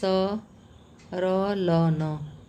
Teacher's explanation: वत्सर्य व्यंजन क्या है? स र ल न मसूड़ से बोला जाता है।